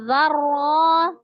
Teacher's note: Yang pertama ro sukun, yang kedua ro fathah. Ro sukun sebelumnya fathah bacanya tebal, kemudian ro fathah juga dibaca dengan tebal. Maka tebal semua nih dua-duanya.